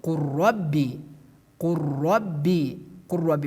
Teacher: We remove the letter lam. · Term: idgham